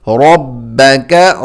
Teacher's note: را موٹا اور با کو جمع کر پڑھیں گے